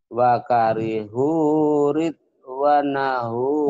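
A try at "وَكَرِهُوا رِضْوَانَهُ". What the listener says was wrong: Wanya panjang. Panjang wanya. Wakarihu ridwanahu fa'ahbata a'malahum.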